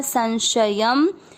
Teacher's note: शब्द पूरा होने के बाद य पे अनुस्वार आधा म